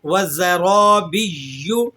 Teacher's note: یا کو آپ نے ذرا سختی سے ادا کرنا ہے، یا پر تشدید لگی ہوئی ہے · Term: مشدد حرف